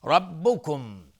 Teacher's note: را استعلاس چون فتحه داره